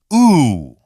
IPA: u